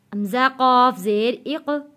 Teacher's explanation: دیکھیں قاف موٹا لفظ ہے اور حروف قلقلہ بھی ہے